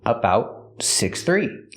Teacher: The T in about is a stop T.